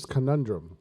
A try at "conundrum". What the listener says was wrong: which you're pronouncing it uh by syllable and it's conundrum